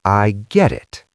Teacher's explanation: we use what we call the flap T. It sounds like a soft D. "I get it." It's fast.